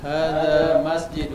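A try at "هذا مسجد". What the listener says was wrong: Nah, kita biasakan dhalnya diperjelas. Ana tahu antum Sundawi, antum Sunda. Dhalnya dhal dibaca dha, hadha.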